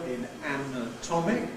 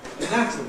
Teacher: In the second syllable, we get [ə] in ‘anatomic’ [ˌænəˈtɒmɪk], but [æ] in ‘anatomy’ [əˈnætəmi].